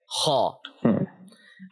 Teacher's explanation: Kha is a heavy letter. By the way, kha originates from the top throat.